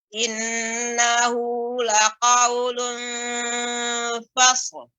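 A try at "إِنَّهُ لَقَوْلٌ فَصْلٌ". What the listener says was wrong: Coba agak lebih dijelaskan lagi shadnya. Innahu laqaulun fasl, fasl. Lebih melambat ya, Ibu.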